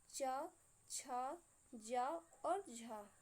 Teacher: संघर्षी व्यंजन में क्या होता था कि बीच का मार्ग 2 अव्यय इतनी निकटता पर आ जाते थे कि बीच का मार्ग छोटा हो जाता था। ऐसे इसमें वे व्यंजन जिनके उच्चारण का समय अपेक्षाकृत अधिक होता है और उच्चारण के बाद वाला भाग संघर्षी हो जाता है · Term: स्पर्श संघर्षी व्यंजन